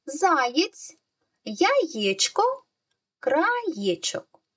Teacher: буква є стоїть всередині слова але також позначає два звуки звук й звук е